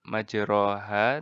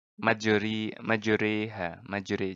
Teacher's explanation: mencondongkan bunyi bacaan baris Fathan lebih hampir kepada bunyi baris kasrah jadi bacaannya barisnya Fatah tapi kita mencondongkan nya jadi mirip kasrah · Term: imalah